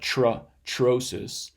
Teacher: In atrocious, the T here is aspirated. It's either t or maybe it's even affricated, like trosis.